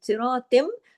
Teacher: صراطم، تا 2 زیر تن کی تنوین ختم ہو جائے گی اور آگے تم ہو جائے گا، ادغام ہو جائے گا. اور میم پہ تشدید کی وجہ سے یہاں غنہ بھی ہوگا کیونکہ ڈبل میم ہے